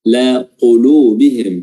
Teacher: huruf qaf pangkal lisan atau pangkal lidah, ya, bertemu dengan langit-langit lunak paling dalam